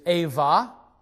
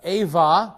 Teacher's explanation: The Hebrew letter bait or B is going to sound like a V when it follows vowels, and so that's why in these words we hear V sounds.